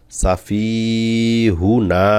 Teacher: হুতে কিন্তু টান হবে না, কারণ হুতে হরকত আছে